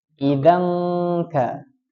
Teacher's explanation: Nah, di situ ada tanwin ketemu kaf. Apa hukum bacanya? Ikhfa. Jadi membacanya samar.